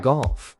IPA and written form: ɡɑlf (golf)